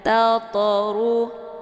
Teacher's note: Ini dinamakan dengan qalqalah sughra. Cara bacanya, to-nya dipantulkan dengan pantulan ringan. Tatru, keluar bunyi to sekedar saja.